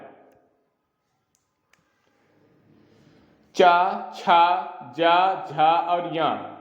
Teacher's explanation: जो चा वर्ग है उसका उच्चारण स्थान हमेशा तालु से होता है